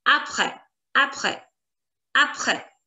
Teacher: the pronunciation of this accent is like eh, eh. Like in the word lesson in English, le, eh. That sound.